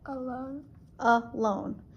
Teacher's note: So we hear that schwa at the start.